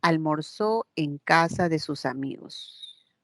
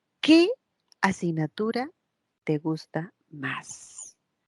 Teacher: El tono final decae, es hacia abajo.